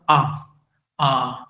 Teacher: अ और आ, ये कंठ से आता है।